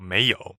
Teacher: May is second tone and yo is a third tone